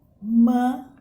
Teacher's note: Neste outro exemplo aqui, gente, a gente vai ver as paroxítonas. A sílaba forte é a penúltima.